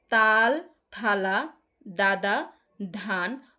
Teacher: যেসব ব্যঞ্জন ধ্বনি উচ্চারণের সময় জীভের ডগা উপরের পাটির দাঁতের সঙ্গে লেগে বাধা সৃষ্টি করে সেগুলোকে বলে দন্ত ব্যঞ্জন